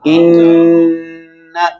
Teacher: इतना गुन्ना लंबा होता है, एक अलिफ की मिकदार के बराबर